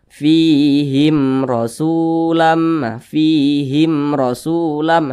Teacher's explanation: hukumnya izhar syafawi dibaca jelas tidak berdengung